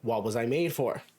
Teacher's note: how we have the schwa in the sound of was, which makes it to be almost like a drop sound